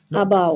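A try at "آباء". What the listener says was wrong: without the dhamma at the end.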